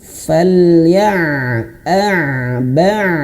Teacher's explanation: Hamzah itu kalau dia disukunkan dia akan terputus suaranya. A ba sain itu mengalir.